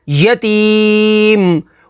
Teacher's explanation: وقف تام کی وجہ سے میم کو ساکن کر دیں گے تو حروف مدہ کے بعد عارضی سکون تو مد عارض ہوگی۔